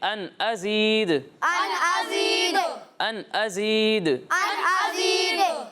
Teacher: یہاں دال کی آواز لوٹتی ہوئی آئے گی. ٹھیک ہے، یہاں کلکلا ہوگا.